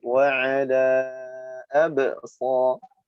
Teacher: ba sukun tengah dibaca mantul tapi kecil